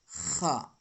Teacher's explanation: یہ حلق کے آخری حصے سے نکلتا ہے